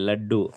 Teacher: அந்த நாக்கு வந்து பல்லுக்கிட்ட லன்னு சொல்லணும். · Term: லகரம்